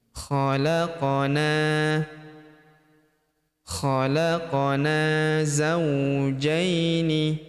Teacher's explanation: Huruf qof berharakat sukun kita pantulkan atau kita qalqalahkan. Khalaqana huruf na kita panjangkan dua harakat karena terdapat tanda alif di depannya